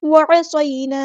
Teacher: आइन को मुस्तहरिक middle throat से अदा करेंगे।